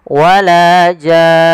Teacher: panjangkan dulu jannya 6 harakat, kemudian masukkan nun dan ditahan baru dimatikan nunnya. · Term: mad lazim kalimi mukhaffaf